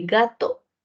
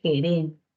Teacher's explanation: Oclusivo como una G de gato o fricativo como una G de gerente.